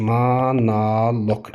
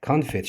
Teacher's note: o vurğusuz vəziyyətdə olanda çevrilib olur a səsi konfet şəklində.